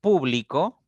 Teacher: pero la posición del acento está en distintas sílabas por ejemplo en público recae en pu en la primera sílaba